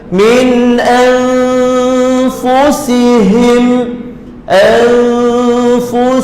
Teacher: Min anfusihim, anfusihim, sin nipiskan betul. Huruf sin pada hujung atas lidah bersentuhan dengan langit yang keras. Kemudian huruf ha halqi paling bawah.